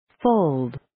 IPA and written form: foʊld (Fold)